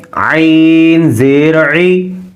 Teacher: عین حروف حلقی ہے، حلق کے بیچ والے حصے سے، حلق کے درمیانے حصے